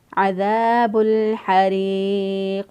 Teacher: قاف جو ہے یہ وقف کی صورت میں ساکن ہو رہا ہے اور یہ حروف قلقلہ میں سے ہے ، تو جب ساکن حرف میں حروف قلقلہ آتا ہے تو